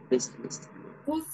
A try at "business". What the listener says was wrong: As let's say business. Business. No se pronuncia la U, sería business. Ajá, business.